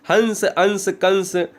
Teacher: हंस अंश कंस कुछ भी आप ऊपर अगर बिंदु लगा दो वो अनुस्वार है। अनुस्वार का उच्चारण की कंडीशन है कि इसका उच्चारण नाक से किया जाता है।